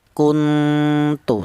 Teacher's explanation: Simpelnya yaitu untuk ikhfa a'la yaitu samar lebih dominan daripada dengung. Ya, bunyi vokalnya apabila diperlihatkan itu berupa huruf n double ya, kuntu seperti itu.